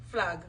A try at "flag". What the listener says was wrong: Boy, you drag out your ag.